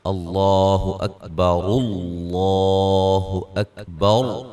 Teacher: را کی جو پیش ہے اس کو ڈائریکٹ لفظ اللہ کے لام کے ساتھ ملا دیں گے